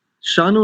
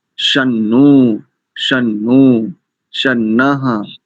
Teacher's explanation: शकार के ऊपर अनुस्वार भी, उसको भी तो आप उच्चारण कीजिए ना, उसको नहीं छोड़ सकते